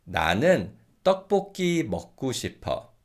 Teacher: this 고 in 고 싶다 can be pronounced as 구 in natural fast speech